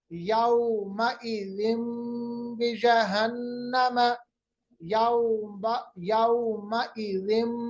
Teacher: मीम की आवाज निकालेंगे क्योंकि दो जेर के बाद बा आ रहा है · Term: इक़लाब